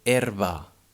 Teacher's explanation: the second one ba is in a weak syllable it's a spell with a but sounds uh